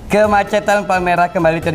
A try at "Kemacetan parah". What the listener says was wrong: Oh, bukan kemacetan Palmerah. Kemacetan parah.